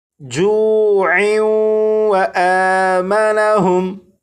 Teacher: اگر اس لفظ پر وقف نہ کرنا ہو بلکہ اس لفظ کو آگے اس لفظ کے ساتھ ملا کر پڑھنا ہو تو پھر یہاں پر تنوین اور تنوین کے بعد واو حروف یرملون میں سے ہونے کی وجہ سے یہاں پر ادغام ہوگا